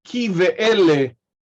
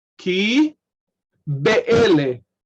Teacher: the vowel at the end of the preceding word affects that bet, and it becomes v. So ki ve'ele rather than ki be'ele.